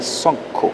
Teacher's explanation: la u se abre hacia la o incluso hacia la otra variante de la o